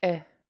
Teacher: a high tone I, a short I at the end